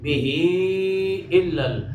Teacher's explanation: یعنی مدہ کے بعد حمزہ دوسرے کلمہ میں ہے مد منفصل مد جائز